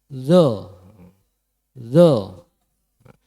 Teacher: Zo niku ujung lidah terkena ujung gigi depan bagian dalam nggih. Zo ujung lidah nggih itu terkena ujung gigi depan.